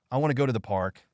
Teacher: the key words are want go and park stress these words more than others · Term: sentence stress